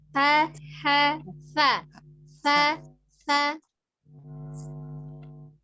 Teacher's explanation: ujung lidahnya ada di ujung gigi seri atas